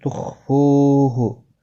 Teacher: تخفوہ، خا مستعلیہ پر پڑھا جائے گا، فو واو مدہ ہے، ایک الف کی مقدار کے برابر کھینچ کر پڑھیں گے